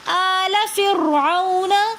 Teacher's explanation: آلہ میں حمزے کے اوپر کھڑا زبر ہونے کی وجہ سے ہم ایک الف کی مقدار کھینچ کر پڑھیں گے۔ فرعون میں را ساکن ہے اور اس سے پہلے زیر ہے، تو اس وجہ سے اس را کو بھی ہم موٹا کر کے پڑھیں گے آل فرعون۔ فرعون میں واو ساکن اور اس سے پہلے زبر ہے، تو واولین بن جائے گی۔